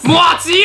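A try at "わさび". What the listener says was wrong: 你 为 什 么 发 音 要 哇 ？ 你 可 以 不 要 那 么 用 力 了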